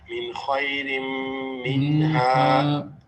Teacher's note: Rin is mixing now, assimilating with the meme here. So rin becomes rim, mixing and joining. That's why there's the shadda there.